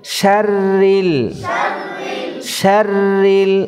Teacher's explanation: শিনের মাখরাজ কি? জিহ্বার মধ্যখান, তারপর উপরে তালু। জিহ্বার মধ্যখান উপরের দিকে তুলে শিনের গুণাটা পাতলা করে আদায় করব।